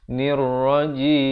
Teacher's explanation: Dan di akhir barulah ditutupkan rapat mulut, menyempurnakan bunyi mim dengan sekurang-kurang dua harakat.